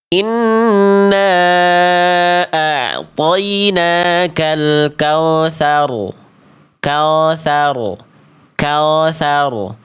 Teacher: Kesalahan poin kedua adalah ketika huruf waw bersukun diawali oleh huruf berharokat fathah, terdengar bacaannya seperti vokal O, yang seharusnya bunyi vokalnya U, bukan O.